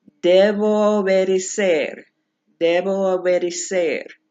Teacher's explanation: Those two O's come together, and you just hang on to it for just a tad longer and move on like it's all one word.